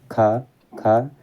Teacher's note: स्पर्श व्यंजन कंठ ध्वनि अघोष और महाप्राण ध्वनि है